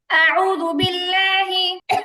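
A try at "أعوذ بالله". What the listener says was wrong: লহি হবে না লহি না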